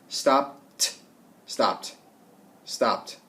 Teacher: Stop ends in P. It's unvoiced, so we do a T sound at the end.